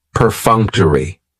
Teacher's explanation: perfunctory has four syllables and the stress is on that second syllable that funk